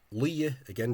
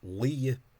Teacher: notice the preservation of the strong L at the start of a word when it's not softened by a word that causes softening